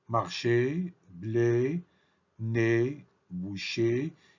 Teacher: quand on prononce ce phonem et la bouche n'est pas très ouverte mais elle est presque fermée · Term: phonème est fermé